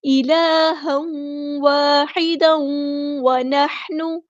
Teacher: یہاں پہ دیکھیے تنوین کی بعد واو آیا تو ادغام مع الغنہ ہوگا۔ الہا واحدا، یہاں پہ دیکھیے تنوین کی آواز کو ہم واو کی آواز میں دوبارہ یہاں پہ مکس اپ کر دیں گے، یہاں پہ ادغام مع الغنہ ہو رہا ہے۔